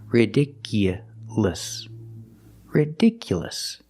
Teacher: So the last two syllables are short.